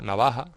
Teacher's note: En la zona de montaña se aspira esa J, igual que en Andalucía